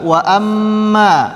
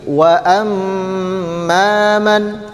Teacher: Wa amma di sini ada mim yang bertasydid maka hukumnya adalah dengung dengung atau gunah sepanjang dua harakat